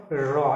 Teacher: র উচ্চারণ করে দেখো র একটা কম্পন আসছে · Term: কম্পিত ব্যঞ্জন